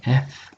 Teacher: देखो दांत नीचे के होंठ पे लग रहे हैं